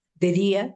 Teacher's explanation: Es una preposición de, por eso es átona. Día es tónico.